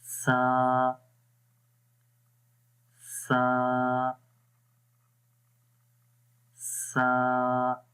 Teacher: Soft आवाज़ रहेगी इसके अंदर और इस ज़ुबान की नोक ऊपर वाले दांतों के यानी सनाया उलिया के किनारों पर लगेगी।